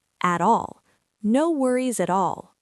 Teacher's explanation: We link the t into the a.